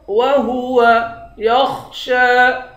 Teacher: خا کو موٹا پڑھیں گے. شین پر کھڑا زبر ہے، ایک الف کی مقدار کھینچیں گے